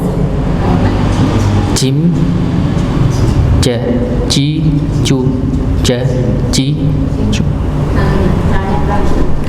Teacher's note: tengah lidah bertemu dengan langit-langit. Ya, sama seperti shin.